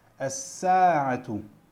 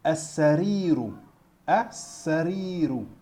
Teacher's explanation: on a le shadda, donc le L, ça ne se prononce pas